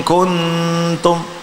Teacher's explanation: kun lidahnya pada ta ya, maka terkena gigi